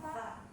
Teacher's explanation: Nah sa ee huruf ta ini sama seperti ta dia dari ujung lidah gitu ya. Nah dia punya sifat hamas gitu ya. Sedangkan dari segi suara dia punya sifat rakhwah ya, ngalir itu.